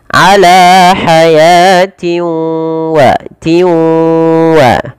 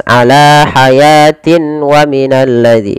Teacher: Kemudian pada lafal tanwin kasratain bertemu dengan huruf waw, ini kita hukumi dengan bacaan idgham bi gunnah. Cara membacanya yaitu memasukkan tanwin ini kepada huruf waw, karena idgham itu artinya memasukkan.